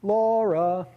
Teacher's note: there's a higher note law and a lower note ra